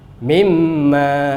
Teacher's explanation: Gunnahnya adalah gunnah mim, maka dia menjadi besar. Mimma, seperti ini jadinya.